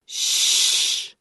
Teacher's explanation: Z is a voiced alveolar fricative. Sh, the first sound in shoe, is a voiceless palato-alveolar fricative